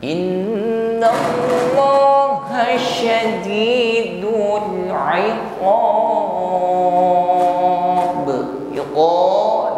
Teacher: meluasnya udara atau nafas di dalam mulut kita bukan sekedar sadid ya bukan desis di ujung lidah tapi menyebar anginnya